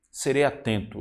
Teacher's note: Então, é a penúltima sílaba mais forte. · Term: rima grave